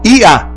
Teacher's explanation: E a sílaba forte é o i.